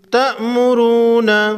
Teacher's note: را پر پیش ہے، را کو موٹا پڑھیں گے